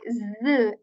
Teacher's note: The Z letter of English has this buzzing sound, has this vibration in it